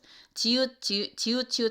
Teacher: 지읒 하면 위에 윗잇몸을 살짝 닿는 거죠